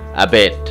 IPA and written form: əˈbɛt (Abet)